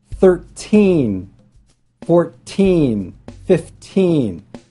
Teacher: So you can see that the word stress falls on the second part